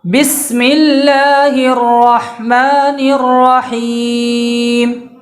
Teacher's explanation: یہ رحمان میں جو ہا ہے وہ بیچ حلق سے ادا ہونے والا ہا ہے۔ عربی میں دو ہا ہیں، ایک ہا جو بیچ حلق سے نکلتا ہے اور ایک ہا وہ ہے جو شروع حلق سے نکلتا ہے، جہاں سے حمزہ ادا ہوتا ہے، یعنی سینے کی جانب سے۔